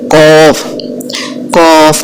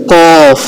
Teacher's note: قاف کا مخرج ہے کہ زبان کی جڑ جب کوے کے قریب نرم تالوں کے ساتھ لگے تو قاف ادا ہوتا ہے